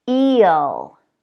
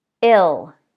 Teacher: with the tense, longer vowel E, the vowel is going to be especially long before that L. Eel, ill. Wheel, will.